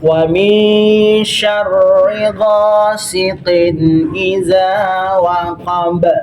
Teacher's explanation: Huruf ba berhenti tanda wakaf. Jadi kalau kita berhenti pas ketemu huruf ba kasih pantul ya, hukumnya qalqala kubra